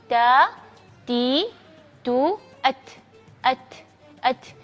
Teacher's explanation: Ta ada suara desirnya ada, tapi jangan ca atau ci, cu, itu tidak boleh. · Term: sifat hams